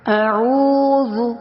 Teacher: اعوذ یعنی حمزہ اقصی حلق سے دور ہے، عین وسط حلق سے، اور واو پہ مدہ یعنی واو مدہ بن رہا ہے، تو ہم اس کو کھینچ کر پڑھیں گے